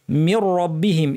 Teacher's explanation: নুন সাকিনের পর র থাকলে ইদগাম কিন্তু গুন্না ছাড়া মির রব্বিহিম এই র টা যেন পুরোটাই ভারী হয় র এর